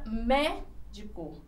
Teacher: A sílaba forte, ela está aqui, ó, na antepenúltima. Então, ela é classificada como proparoxítona.